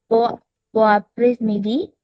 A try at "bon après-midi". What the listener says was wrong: No, not S.